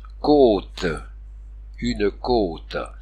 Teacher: le S ferme et allonge la voyelle qui le précède